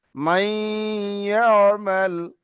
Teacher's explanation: এই নুন সাকিনের আওয়াজটা নাকের মধ্যে রয়ে যাবে, কিন্তু নুনটা উচ্চারণ হবে না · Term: ঈদগামে নাকিস